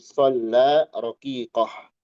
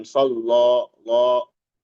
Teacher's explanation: Adapun riwayat yang kita baca shalla, la, dibaca tipis. A-nya jelas, nggak jadi o. Itu maksud tipis.